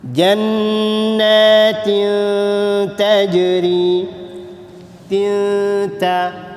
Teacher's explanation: Ni tanwin bertemu dengan huruf ta, hukum ikhfa, maka dengung dia tak berapa tinggi.